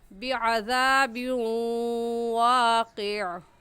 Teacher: واو دیکھنے میں ایک ہے اور پڑھنے میں دو مرتبہ پڑھا جائے گا، ایک مرتبہ با کے ساتھ ملا کر اور دوسری مرتبہ خود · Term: ادغام